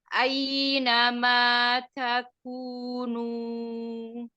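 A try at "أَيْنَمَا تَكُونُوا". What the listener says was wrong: Ainama takunu. Jangan ainama. Jadi setiap lin jangan dihentak.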